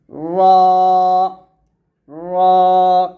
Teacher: অথবা জিহ্বার আগার উল্টা পিঠ এখানে উল্টা হবে উল্টা উল্টা পিঠ জিহ্বার আগার উল্টা পিঠ তার বরাবর উপরের তালু লাগিয়ে এই রটা উচ্চারণ করতে হবে র র এরকম রা বলবেন না এটা হচ্ছে র র মোটা · ঠোঁট স্বাভাবিক থাকবে শুধু জিহ্বার আগার উল্টা পিঠটা উপরের তালুর সঙ্গে লাগাবেন